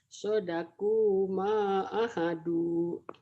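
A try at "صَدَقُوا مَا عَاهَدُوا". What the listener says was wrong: A-nya panjang. A-nya panjang. A-nya panjang. Yang panjang itu satu ini. Kenapa ini panjang? Doma dengan waw mati matobi'i.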